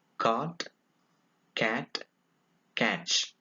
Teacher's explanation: It is a voiceless velar.